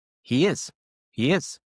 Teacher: It's like a subtle Y that we're adding.